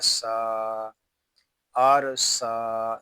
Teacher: سین میں سیٹی کی آواز آئے گی اور اس کو ہم ایک الف تک کھینچ کر پڑھیں گے کیونکہ سین کے اوپر کھڑا زبر آ گیا ہے.